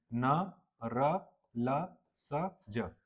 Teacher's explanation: ठीक है, अगर मेंस में आता है 2 नंबर में तो ऐसे लिखना है कि वे व्यंजन जो उच्चारण करते समय जीभ के ऊपरी मसूड़ों को स्पर्श करते हैं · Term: वर्ष व्यंजन